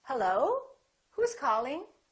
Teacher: I can make the rising intonation, and when I answer the phone, I can say hello. So the pitch goes up.